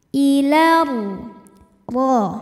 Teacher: maka alif lam tidak dibaca dinamakan dengan Idgham Syamsi bacanya diidgamkan atau dimasukkan ke huruf ro ilar ro R nya